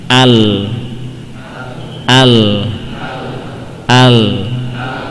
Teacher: Lidah ke sana, ke gusi yang di atasnya, kemudian yang di depannya gigi taring dan seri, maka itulah tempat keluarnya huruf lam.